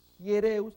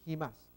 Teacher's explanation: Himas, aquí en ambos casos, Hiereus y Himas, tiene acento, espíritu rudo, mirando a la derecha, así que suena una pequeña J.